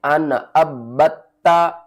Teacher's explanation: नून के ऊपर आपने गुन्ना नहीं करना, नून के ऊपर इजहार करना है क्योंकि नून साकिन के बाद आगे हरूफ हल्की में से आइन आ रहा है।